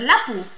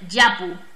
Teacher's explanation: una eye no va a ser lapu Va a ser yapu se realiza esa palatalización de la l